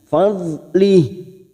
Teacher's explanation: Jangan sampai memantul karena bukan qalqalah, kita tahan.